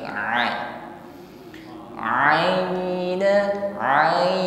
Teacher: Ain saya katakan di sini lebih lunak dari Hamzah bukan a tetapi a a a ada Ya Sukun sebelumnya harakat